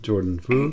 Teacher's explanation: it's a rising tone, like you're asking a question. Yeah, like my eyebrows would go up when I say that, Jordan Fu.